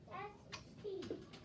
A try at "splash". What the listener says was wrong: Now, SP would be spash. Spash. SPL, because I went spol. I'm missing that L sound. Splash. Splash. So, chunk it apart, break it apart. Break your blends apart. Make sure you have every sound.